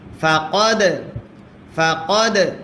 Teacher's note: দালে যদি সাকিন হয় কল কলা করতে হয়।